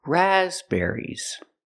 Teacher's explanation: We cannot put any stress on the third syllable. There's only one stress, it's on the first syllable.